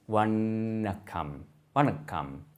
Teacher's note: it has a retroflex nasal consonant. This is made with the tip of the tongue curling back and touching the hard palate. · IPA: [ʋɐɳɐkːɐm]